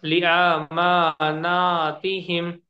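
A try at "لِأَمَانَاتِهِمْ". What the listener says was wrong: नहीं, इसको क्या करिए, थोड़ा सा आकू जल्दी पढ़िए खाली। ली आ के बजाय ली अमा।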